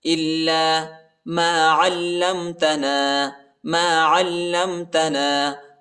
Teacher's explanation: عین کو لام کے ساتھ ملائیں گے اور لام کو میم کے ساتھ ملائیں گے۔ علمتنا، لام کو شدت کے ساتھ پڑھیں گے، سختی کے ساتھ۔